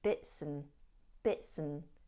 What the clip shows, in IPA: bɪtsən